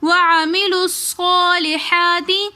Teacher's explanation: صاد کے اوپر کھڑا زبر ہے تو اس لیے صاد کو ہم ایک الف کی مقدار کھینچ کر بھی پڑھیں گے، پھر آگے ہا کے اوپر بھی کھڑا زبر ہونے کی وجہ سے ہم ایک الف کی مقدار کھینچ کر پڑھیں گے۔ · وعملوا الصالحات میں ہم لام کو صاد مشدد کے ساتھ ملا کر پڑھیں گے کیونکہ مشدد حرف متحرک حرف کے ساتھ ملا کر پڑھا جاتا ہے۔